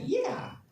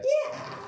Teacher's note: it sounded like there's a bit of a vocal fry